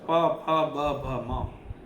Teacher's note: પ ફ બ ભ મ બધા ઓષ્ઠ્ય છે એના માટે હોઠ થી બોલાય